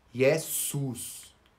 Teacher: O S é bem sutil, não vibra nada. Então, em Jesus, o S é desvozeado